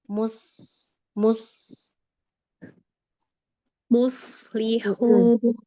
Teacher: sofir itu keluarnya suara antara ujung gigi sari atas sama gigi sari bawah.